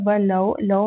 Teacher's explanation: واو ساکن سے پہلے زبر ہو تو واو لین ہوگا، اس کو نرمی کے ساتھ موڑتے ہوئے ادا کریں گے